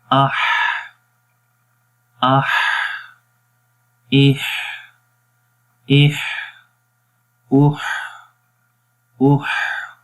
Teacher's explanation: تو ہمس کی صفت یعنی کہ ہمس میں ہم سانس جاری رکھتے ہیں۔ جن حروف کے اندر یہ صفت پائی جائے گی ان حروف میں سانس جاری رہتا ہے۔